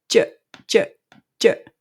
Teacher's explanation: the J sound is happening because you have the tip of the tongue touching the bump.